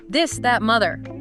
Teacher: Focus on that vibration in your throat as the air comes out.